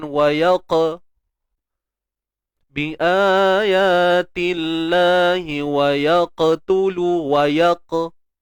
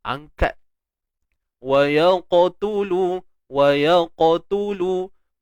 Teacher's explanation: Walaupun kita nak fokuskan pada qalqalah, tapi jangan lupa tentang tebalnya huruf qaf itu. Jadi bila kita nak lantunkan tu, jangan wayaqa bi ayatillahi wa yaqtulu wa yaq. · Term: isti'la